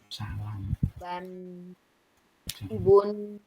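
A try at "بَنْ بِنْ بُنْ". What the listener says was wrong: Itu terlalu nyantai, jadi dia terlalu lemah, jadi kayak lebih ngalir ya. Coba lebih tekanannya sedang ya. Ban, bin, bun.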